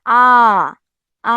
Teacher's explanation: কেন্দ্রীয় স্বরধ্বনি মানে জিহ্বাটা একদম কোথায় থাকবে? কেন্দ্রে থাকবে। · জিহ্বাটা কোথায় থাকবে? একদম মাঝ বরাবর কেন্দ্রে থাকতেছে।